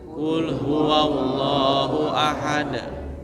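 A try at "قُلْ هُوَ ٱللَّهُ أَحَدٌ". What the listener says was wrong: Coba Ustaz, qafnya dihilangkan basah-basahnya.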